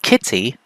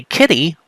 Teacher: T and flap are not contrastive in English. You can say the word kitty with an actual T sound, or you can say kitty with a flap. Replacing the flap with a T will not change the meaning.